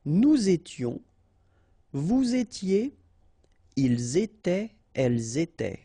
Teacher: final S not pronounced, and then you make the liaison. Nous étions, vous étiez, ils étaient, elles étaient.